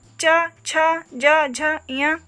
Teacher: चा वर्ग के अंतर्गत च, छ, ज, झ, य, इसका उच्चारण स्थान तालु होगा